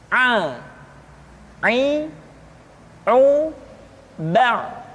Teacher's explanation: pengucapan huruf A dikeluarkan dari tengah-tengah tenggorokan seperti kita mengucapkan huruf H. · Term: huruf Ain